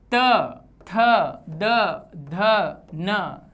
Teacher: जीभ ऊपर के दांतों को पीछे से स्पर्श कर रही है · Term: दंत्य